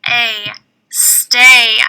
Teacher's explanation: it it is a digraph two letters that make one sound you don't even hear a y it's silent so we cross it out we do hear a long a sound